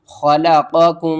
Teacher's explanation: ادغام شفوی کریں گے، یعنی کہ ایک حرف کو دوسرے حرف میں ملا کر پڑھیں گے